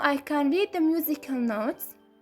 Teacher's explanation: With the word like notes, there is only one syllable. Our voice has to glide or slide downward. So the syllable is long enough for us to change that pitch.